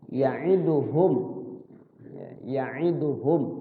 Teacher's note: Izhar artinya jelas, syafawi artinya bibir. Artinya mimnya itu terbaca jelas di bibir, nggak boleh disamarkan. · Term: izhar syafawi